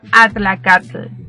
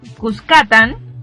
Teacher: el fonema lateral alveolar africado, TL. No obstante, la ausencia de este fonema en pipil, encontramos numerosos topónimos en el país que lo incluyen, como por ejemplo el topónimo Cuscatlán.